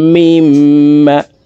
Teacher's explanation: মিম এখানে গুন্না করে পড়ব